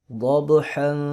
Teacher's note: با پہ قلقلہ ہوگا، ضاد کو موٹا کریں گے، حا کو حلق سے